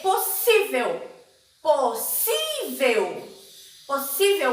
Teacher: ela é uma paroxítona e penúltima sílaba mais forte